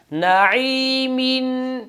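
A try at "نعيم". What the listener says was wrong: नई नहीं, आइन पर शद ना हो बल्कि आइन गले के दरमियान से अदा हो।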